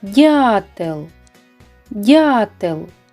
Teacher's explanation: наголошеним є звук а намалюємо наголос над першим голосним